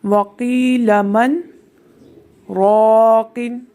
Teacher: اب من کے بعد میں رک گئی، میری آواز آپ کو کچھ دیر نہیں آئی، لیکن میرا سانس جاری رہا، سانس میں نے نہیں توڑا، کیونکہ سکتہ کا حکم ہی یہی ہے کہ سانس ہمارا جاری رہے اور آواز ہماری بند ہو جائے کچھ دیر کے لیے۔